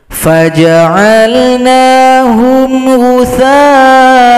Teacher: Di sini ada hamzah yang fathatain. Cara berhentinya hamzah diringkas menjadi satu saja, an menjadi a, tambahkan alif panjang dua gitu kan, mad iwad.